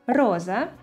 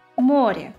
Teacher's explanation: In the first word «роза», the initial sound «р» is hard, while in the second word «море» it's soft, as it is followed by a vowel «е».